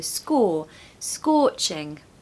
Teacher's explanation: scorching scorching it's almost like a w sound so score scorching make sure you stress the first syllable